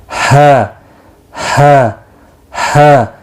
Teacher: नरमी के साथ सांस को छोड़ते हुए हलक से, ये भी इंतहाई हलक यानी सीने की तरफ से निकलता है। हा, सांस को छोड़ते हुए।